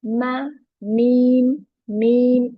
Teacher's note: Meme sound comes when the dry part of both lips meet.